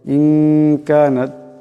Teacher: কাফ ইকফার হরফ, এখানে ইকফার একালি পরিমাণ গুন্না হবে।